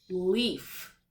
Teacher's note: When we see a word with the E and the A in the middle, we don't say the A, we just say the long vowel E